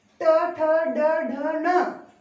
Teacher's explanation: ट ठ ड ढ न, र और श का उच्चारण स्थान मूर्धा होता है।